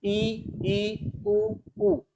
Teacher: मुख जो है हमारा, जो मुंह है वह लगभग बंद सा हमें प्रतीत होता है। ई उ उ, मुख में, हमारे मुंह में कोई ज्यादा हलचल नहीं होती है। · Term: संवृत स्वर